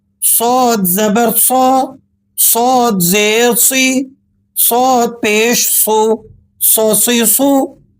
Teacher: موٹی سیٹی کے ساتھ آپ نے اس حرف کو ادا کرنا ہے۔